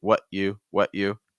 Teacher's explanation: a held t or stop T which we saw earlier where I don't let the T Escape